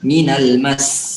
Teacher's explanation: Ditahan lebih lama lagi sedikit. 2 harokat.